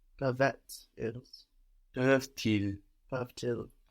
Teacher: So you don't hear the whole ending of the verb, just that last consonant. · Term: liaison